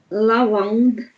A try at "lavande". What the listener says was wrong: Глубже lavande, lavande.